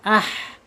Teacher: Huruf H khusus saya sampaikan yang pertama dia punya sifat hames mengalirnya napas. Yang kedua dia mempunyai sifat arkhawah mengalirnya suara. · Mengalir suaranya bukan tertahan ya.